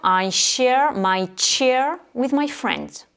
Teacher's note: share, c'est les lettres SH, donc ça fait le son che. Et chair, C-H-A-I-R, la chaise, c'est les lettres CH, mais là, en anglais, on les prononce tche.